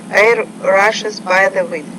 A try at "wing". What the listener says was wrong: Okay, so the E sound, I want you to work on a little bit more. You need to make it longer. Wing, wing.